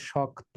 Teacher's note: এই যে যুক্ত বর্ণ, যুক্ত ব্যঞ্জন বর্ণ থাকার কারণে শক্ত, শেষের তো ছিল ত, কিন্তু তো হয়ে যাবে, ত এর সাথে যে অ আছে সেই অটা এখন ও হয়ে যাবে। এই জন্য শক্ত নয়, উচ্চারিত হবে শক্ত। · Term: সংবৃত